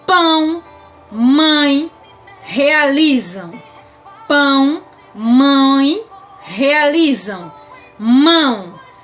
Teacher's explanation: Notem que o som sai pela minha boca e também sai pelo meu nariz. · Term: ditongo nasal